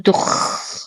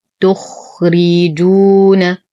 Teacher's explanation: ننتبه كثيرا لحرف الخاء من عدم إعطائه الشخير فلا نقول تخ وهذا خطأ، والصواب تخرجون.